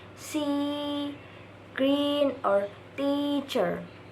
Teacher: It is called closed because your tongue is raised very high, almost touching the roof of your mouth, higher than for A. It is a front vowel because the front part of your tongue moves forward toward the hard palate. · called a closed front unrounded vowel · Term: long E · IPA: /iː/